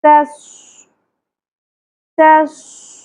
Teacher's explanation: ता को बारीक पढ़ना है, स्वाद को पुर करना है। अक्सर लोग स्वाद को पुर करते करते ता को पुर करते तोस पढ़ते, तोस नहीं पढ़ना, तस, तस।